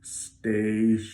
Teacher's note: the word station if I look up the word on dictionary.com I see a schwa in the second half of the word